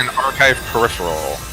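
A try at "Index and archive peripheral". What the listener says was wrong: Sounds like the emphasis is on and.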